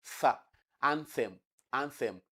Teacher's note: that is voiceless dental fricative